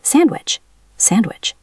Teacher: The letter D also disappears when it is sandwiched between consonants.